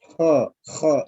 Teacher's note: pada saat kha yang pertama harus ada gesekan · Kalau ha lembut ada gesekan, tapi kalau kha dia agak kasar.